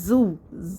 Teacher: اس کو سیٹی کے ساتھ پڑھیں گے